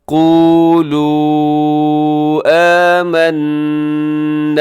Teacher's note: یہاں نون مشدد ہے، یہاں پہ آپ غنہ کیجیے گا · قولو، آگے جو لو ہے اس کے اوپر یہ بھی واو مدہ ہے یعنی حروف مدہ ہے، اور حمزہ اگلے لفظ کے شروع میں ہے تو یہاں بھی مد منفصل ہے، چھوٹی مد ہے، آپ اسے 4 سیکنڈ تک لمبا کیجیے گا